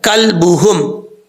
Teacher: کلبہم کاف بریک ہے اور لام ساکن ہے, قلقلے سے بچانا ہے